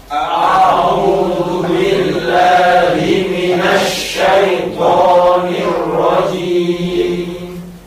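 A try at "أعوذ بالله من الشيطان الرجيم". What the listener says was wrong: Cuman masih terdengar juga agak miring, terutama pengucapan syai. Syai. Ya mati maka harus meringis. Syai bukan syai tapi syai. Waw dimatikan bertemu koma juga harus mencucu, mojok ke depan. Zu bukan zu. A'udzu billahi minasy syaithanir rajim.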